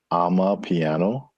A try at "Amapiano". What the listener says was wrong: Amapiano. One word, Amapiano. Not I'm a piano, but ama. not I'm a piano, it's I'm a piano. Not ama. It's a girl named Ama, and it's her piano.